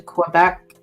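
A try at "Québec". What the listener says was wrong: Quebec. Not Quebec. The Q and the U are not pronounced. It make the Q and U make the sound of a K sound in French. It's not Quebec. It's Quebec.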